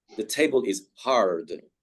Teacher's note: Americans, again, would stress the R.